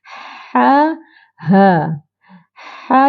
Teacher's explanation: ini makhrajnya ialah Alha halqum ataupun kerongkong iaitu di tengah kerongkong di tengah kerongkong kita tekan suara di tengah kerongkong dan bunyikan ha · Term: ha dada